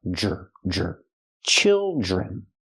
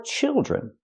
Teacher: the Dr makes the J sound like jump and Juice